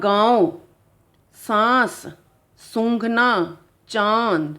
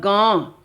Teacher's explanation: थे अनुसार जो केवल नाक से बोले जाते हैं है और यह अनुनासिक जो नाक से और मुख से दोनों से बोले जाते हैं